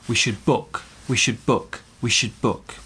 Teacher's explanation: Focus on the stressed word, which is book.